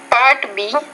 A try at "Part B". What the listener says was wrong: Notice you said part B. No, it's part B. So you're pronouncing the P. It's kind of like in between a P and a B sound. That's what you're doing.